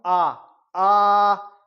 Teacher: आ के उच्चारण करने में मुख द्वार 100% खुला रहेगा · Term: विवर्त